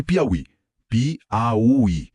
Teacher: O I está tônico, sozinho lá no final, separando-se do bloco anterior. Leva acento também.